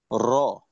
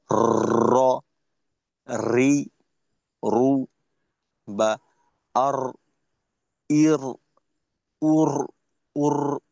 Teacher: তাকরার হলো র, এই যে র, র, এই যে একটা আওয়াজ হচ্ছে, র, রি, রু, বা আর, ইর, উর, উর, এই যে জিহ্বার আগাটা একটা কম্পন হয়ে বারবার উপরের তালুকে স্পর্শ করে, প্রত্যেকবার খন্ড খন্ড ছোট ছোট রয়ের জন্ম হয়